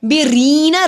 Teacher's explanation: الصابرین صاد موٹا پڑا جاتا ہے، صاد کے اوپر کڑی صاد کے اوپر کھڑی زبر ایک الف کے برابر لمبا ہوگا۔ بیرینا ری کو لمبا کیا جزم والی یا سے پہلے زیر حروف مد ایک الف کے برابر لمبا ہوگا